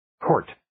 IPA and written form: koʊrt (Court)